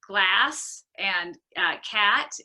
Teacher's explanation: the front short vowel a, the way we pronounce it in American English